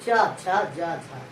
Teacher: चा छा जा झा स्पर्श होते हैं, जीव अच्छे से स्पर्श हो रही है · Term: स्पर्श संघर्षी